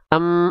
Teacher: Em m suaranya hilang. Berarti mim selain dia makhrajnya dari bibir, suaranya masuk ke dalam rongga hidung atau alkhaisyum. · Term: huruf mim